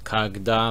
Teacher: the stress is on the a so it's kagda like an a sound